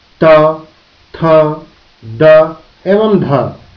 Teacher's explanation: दंत्य dental, वे ध्वनियां जो जीभ के अग्र भाग द्वारा ऊपरी दांतों के छूने से उत्पन्न होती हैं, उन्हें दंत ध्वनि कहते हैं। इस प्रक्रिया में जीभ का अग्रभाग ऊपरी दांत को स्पर्श करता है, जैसे त, थ, द एवं ध ध्वनियां दंत होती हैं।